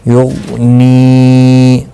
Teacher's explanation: یا غین پیش یغ، نون یا زیر نی، یغنی۔ غین مستعلی ہے، پر پڑھنا ہے، اور یہ جو ساکن ہے اس پر قلقلہ نہیں ہونا چاہیے کیونکہ حروف قلقلہ میں سے غین نہیں ہے۔